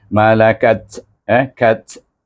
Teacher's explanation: kaf dengan ta yang hamas bunyi. Kaf pun hamas juga. Malakat kat bunyinya.